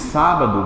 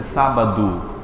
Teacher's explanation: Não exatamente o mesmo som de escrita. Quando você diz sábado, você não pronuncia um O aqui, você pronuncia o quê? U